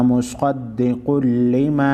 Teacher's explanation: हुरूफ़ मुस्तालिया स्क़ाद और क़ाफ को मोटा पढ़ेंगे।